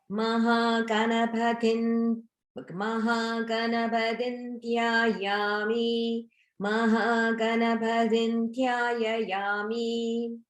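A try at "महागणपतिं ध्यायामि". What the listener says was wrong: Very close. So the last word, there's a Maha prana, and it's dhyayami. Dhyayami.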